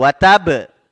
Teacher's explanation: tab watab lihat di sini ada huruf ba ya di ujungnya ada huruf ba yang tasdid maka pantulannya ini menunggu ada jeda tidak langsung mantul